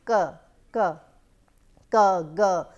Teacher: you can see the velar sounds which are produced by back of the tongue and the velum. So, back of the tongue actually raises a little k, g.